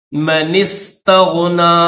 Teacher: من استغنا، اما منس، نون کو سین کے ساتھ ملائیں گے، درمیان میں الف کو چھوڑ دیں